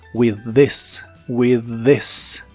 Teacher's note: Y usaremos las palabras with this, que significan con esto. Si juntas las palabras, las TH suenan como un solo sonido de la D vibrante y alargada.